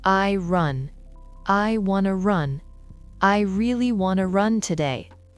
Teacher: On garde run comme mot fort et on compresse tout ce qui est avant. Plus la phrase est longue, plus les mots faibles deviennent rapides et flous.